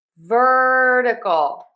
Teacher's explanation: Now technically this is a flap T in the syllable number two. However, I just spell it with my phonetic spelling as a D because the flap T is like a fast D sound.